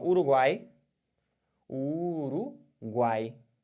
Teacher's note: o som de três vogais faladas pela boca apenas tritongo oral · quando você fala Uruguai, não altera nada tampando o nariz. Por quê? Porque você não tem nenhum som nasal aqui.